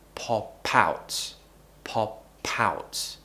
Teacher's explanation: Now here we're actually connecting our speech. We're connecting pop to out.